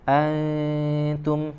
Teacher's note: tipiskan di bacaan dengung ikhfa di sini antum ya, mendekat ke huruf ta suara dengungnya